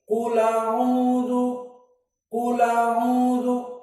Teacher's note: hamzahnya dihapus dan harokat pada hamzah yang fathah pindah ke lam. Maka lam yang di qiraah Hafs sukun qul jadi qula.